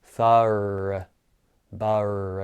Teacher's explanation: after I release the consonant, I just release it into a lazy schwa sound